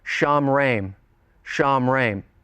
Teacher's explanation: You have the O class vowel in the first syllable, followed by the pronominal suffix with an E class connecting vowel.